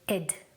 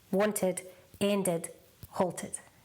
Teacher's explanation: So try and focus on any verb that ends with T or D. You pronounce the ED as id, not ed, id.